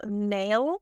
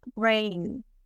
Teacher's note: make contact with the upper gum ribs and we have that in manner of production it is nasal again and that it is voiced